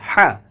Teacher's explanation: একালিফ টান হবে, চিকন করে উচ্চারণ করতে হবে